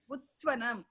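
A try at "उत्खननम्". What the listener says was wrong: It is kha, right? Post swa will come. Where is swa? Where is sakara? That is utkananam. Not swananam. There is no sakara there. Takara plus kha.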